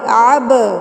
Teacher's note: با کو ہلا کر پڑھنا ہے، قلقلہ کرنا ہے